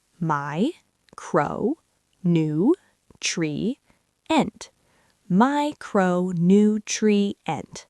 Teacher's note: The primary stress falls on the first syllable, my.